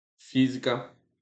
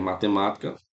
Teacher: Tanto em física como matemática, aqui, ó, a sílaba forte é a antepenúltima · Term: proparoxítona